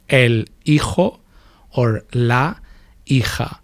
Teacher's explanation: So the H is silent and the J in Spanish sounds H, right? Or in some territories, it's softer, it's H, kind of like the H in English.